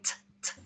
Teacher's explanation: when we say t, t, we can feel the tongue touching just behind the teeth